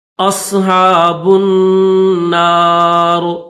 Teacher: با کو نون کے ساتھ ملائیں گے